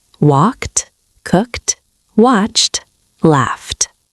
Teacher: It's not walked, 2 syllables. It's just 1 syllable with a T sound at the end.